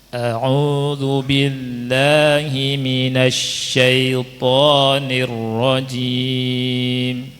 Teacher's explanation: Dan mat tabi'i cuma 2 harokat saja diayunkan. Jadi bacanya a'udzu billahi minasyaitonir rajim.